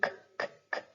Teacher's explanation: it is unvoiced because when you make the k, k, k sound, your vocal folds are not vibrating. If you want to go ahead and try it yourself, you put your hand up to your throat and do k, k, k a couple times, and you don't feel any vibration down there.